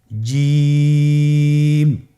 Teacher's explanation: আপনারা জিহ্বার মধ্যখানটা লক্ষ্য করুন এবং তার বরাবর উপরে তালুর সঙ্গে লাগান, এরপর হরফটি উচ্চারণ করুন